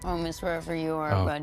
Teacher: God, that is really annoying vocal fry, if you ask me.